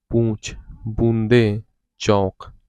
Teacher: ये अनुनासिक स्वर इन स्वरों को उच्चारण में ध्वनि मुख के साथ-साथ नासिका से भी बाहर निकलती है।